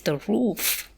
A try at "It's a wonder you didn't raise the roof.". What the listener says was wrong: Yes, it's a wonder. Maybe a bit more oomph in wonder. It's a wonder you didn't raise the roof.